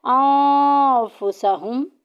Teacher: नून साकिन की आवाज़ को छुपाना है। या तनवीन के बाद जो नून साकिन की आवाज़ आती है ना, तनवीन में जो आवाज़ आती है नून की, उसको हमने छुपाना है। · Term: इख्फा